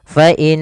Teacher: sini kita tasdidkan nunnya dan ditahan suara dengungannya atau suara gunahnya gunah itu memasukkan suaranya ke rongga hidung